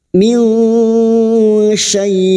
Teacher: Nun sukun bertemu shin berikutnya ikhfa hakiki, kita samarkan bunyi nun sukun dan mendengung selama 3 harakat.